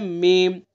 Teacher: मीम को दोनों होठों के खुश्की वाले हिस्से को मिलाकर के अदा किया जाता है